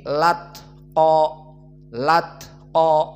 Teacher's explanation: Al-atqa hamzahnya dihilangkan, lalu setelah dihilangkan harokat pada al-a, atqa, a fathah dilarikan kepada lam menjadi latqa, latqa. Dan juga makna dari taklil dibaca dengan imalah as-sughra menjadi te, berarti dibaca lat te, lat te. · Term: naql